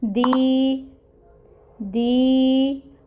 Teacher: یائے مد کا رول ہو رہا ہے، اور اس کو کرنے کے لیے ہمیں 2 مقدار 2 حرکت کے برابر پڑھنا پڑے گا، 2 کاؤنٹس، دی، دی، اور پھر نون ہے، ساکن کر دیں گے نون کو کیونکہ آیا مکمل ہو رہی ہے، دین، اور اس کو 6 کاؤنٹس تک آپ کھینچ سکتے ہیں۔